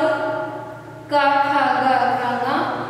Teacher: इनका उच्चारण स्थान कंठ है, गला है, जीभ का सीधे ये गले से निकलते हैं।